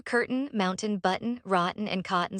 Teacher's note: drop your tongue downward and let the N carry the sound out through your nose. The T stops, the N continues. The transition between them is where the entire American quality of the sound lies.